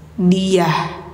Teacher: Kalau ta bulat ketika di akhir kalimat atau dalam keadaan mati suaranya menjadi ha